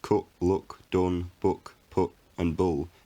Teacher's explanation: for most northern english speakers all of these words cut look done book put and bull have the same vowel phoneme